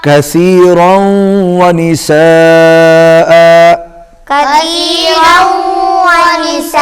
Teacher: حمزہ کے اوپر تنوین ہے، تو اس کو ہم الف کے اندر بدل دیں گے